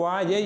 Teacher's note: அதை பழைய பண்டிதர்கள் யகரம் யானா போல உச்சரிப்பார்கள். இப்போது வாழை என்றால் முந்தைய பண்டிதர்கள் என்ன மாதிரி உச்சரிப்பார்கள், வாயை என்று உச்சரிப்பார்கள்